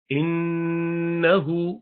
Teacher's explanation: नून मुशद्दद हमेशा गुन्ना करते हैं